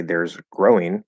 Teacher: if you don't mean to add the word a you just want to say there's growing then you don't want the schwa